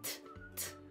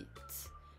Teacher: Actually, it's a bit different in English, in British English and American English, but basically more intensity and explosivity on the English side and more relaxed and less intensity on the French side